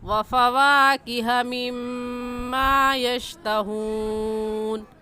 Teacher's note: مما میں میم مشدد ہے اور میم مشدد پر ہمیشہ غنہ ہوتا ہے، تو غنہ کر کے پڑھیں گے ایسے وفواکہ مما یشتہون۔